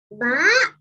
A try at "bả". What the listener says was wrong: Nào, hôm nay lại bá rồi. Nào, bả. Bả.